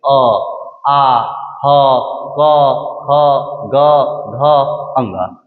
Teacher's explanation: मतलब कि जब अ, आ, ह और क वर्ग में पांचों, क से अंगा तक अगर किसी को बोलिएगा तो उसके उच्चारण में आपका मुख का कौन सा भाग शामिल होगा? मुख्य रूप से कंठ से वो आवाज निकलेगा। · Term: कंठ से बोले जाने वाली वर्ण